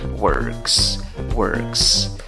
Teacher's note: En la escritura tienes una O, en la pronunciación tienes una schwa, la que no es ni A, ni E, ni O. Le escribes con una S al final para decir él trabaja, ella trabaja, y la pronunciación también es con una S al final.